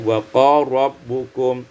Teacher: Pada ayat yang ke-60, wa qala rabbukum, idghamul lam fil ra, diidghamkan lam pada ra menjadi wa qala rabbukum.